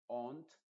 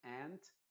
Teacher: en Inglaterra le dicen ont, una cosa así, pero en Estados Unidos se dice ant